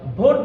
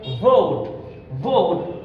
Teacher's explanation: উপরের দাঁত নিচের ঠোঁটের সাথে লাগিয়ে বলতে হবে